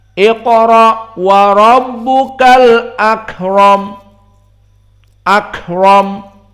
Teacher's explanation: maka al-hamzah dibaca dengan tahqiq. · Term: tahqiq al-hamzah